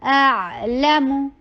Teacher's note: حمزہ short ہوگا اور بہت شارپ ہوگا، اور عین کے پر توسط ہوگا اور عین حلق سے ہوگا